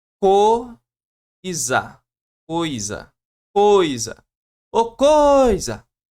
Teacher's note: Ô, coisa. Ó, o puxou mais que o I. Então o I aqui ele é semivogal. · o O puxou mais que o I